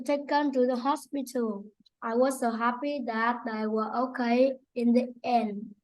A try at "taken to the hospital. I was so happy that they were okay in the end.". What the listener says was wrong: Okay, you have to say all your words properly. There's some words you're not saying to the end and you're not saying your S, okay?